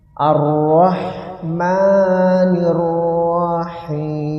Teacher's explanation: Jadi ha di situ hamas, napas mengalir.